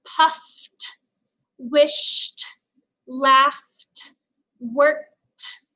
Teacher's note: if the word ends in an unvoiced sound, like puffed, wished, laughed, worked, it's going to end in that T